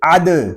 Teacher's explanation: دال ساکن ہے، اس میں خوب کلکلہ ظاہر کریں گے، اس کو عد اس طرح نہیں پڑھیں گے، اس کو پڑھیں گے عد۔